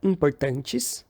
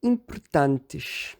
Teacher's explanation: os róticos no fim das sílabas no português brasileiro. Nesse caso específico, ele vira uma aproximante alveolar.